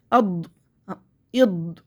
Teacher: اد جیسے خالی کمرے میں آواز گونجتی اس طرح سے